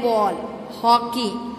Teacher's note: विवृत ओ का उच्चारण आ और ओ स्वरों के बीच का होता है।